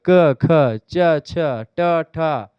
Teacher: अघोष में आप देखें क ख, देखिए तुरंत निकल जा रहा है